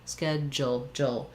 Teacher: American English schedule, we say The eh vowel, like in red, schedule, and this du makes the j sound